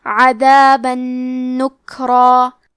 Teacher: نون حروف الادغام بغنہ میں سے ہے، تو ہم یہ حکم کو غنہ اور تشدید کے ساتھ ادا کریں گے